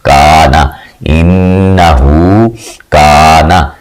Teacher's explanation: الف زیر نون ان، نون زبرنا، ان، ہا الٹا پیش ہو، انہو، کاف زبر الف کا، نون زبرنا، کانا، اس کو کانا نہیں پڑھنا آپ نے، کا جو ہے اس کی کوشش کرنی ہے آپ نے کہ ناک میں آواز نہ جائے